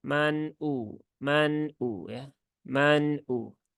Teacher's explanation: Maka yang benar adalah ya tunaikan sifat tawasud dari nun itu sendiri. Nah, maka dia tidak mengalir dan juga tidak syiddah. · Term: izhar halqi